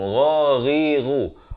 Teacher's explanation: Ghain makhrajnya di hujung kerongkong